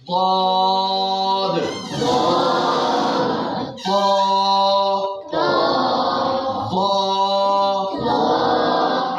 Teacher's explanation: اے ضاد جڑا ہے نا اے زبان دا جڑا کنارہ ہے اتلیاں داڑھاں نال لگ جائے تے تاں ادا ہوندا ہے ضاد